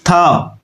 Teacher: दंत्य इसलिए हुआ क्योंकि त वर्ग में आ रहा है, त वर्ग वाला सारा दंत्य होता है। अघोष वर्ण है ये, ठीक है, और स्पर्श भी है